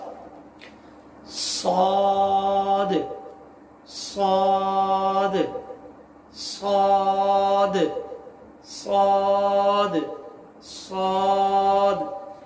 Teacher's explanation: زبان کی نوک اور اوپر نیچے کے دونوں دانتوں سے ادا ہوتا ہے